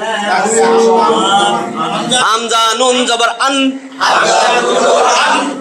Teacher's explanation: উপরে তালের সঙ্গে লাগাইয়া নুন 9 মানে নুন 9 নম্বর মাখরাজ জিহ্বার আগা তার বরাবর উপরের তালুর সঙ্গে লাগাইয়া নুন